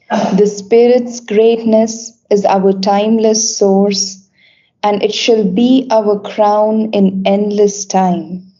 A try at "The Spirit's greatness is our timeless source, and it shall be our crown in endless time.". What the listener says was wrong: Yeah, but you didn't do that quite well enough because you said source, but source is very important. Yeah, we go up a little bit, in fact, in intonation, that the Spirit's greatness is our timeless source.